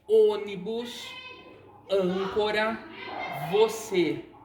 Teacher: Então, a gente percebe que ela tem um som mais aberto, a gente tem uma abertura maior da boca para falar. Já o acento circunflexo, ele vai representar um som fechado da vogal